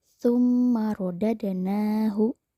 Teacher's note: Tsumma rodadnahu. Kata rodad, huruf dalnya berharokat sukun dan berada di tengah-tengah kalimat atau kata. Maka cara membacanya itu harus dipantulkan kecil atau tipis. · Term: qalqalah sugro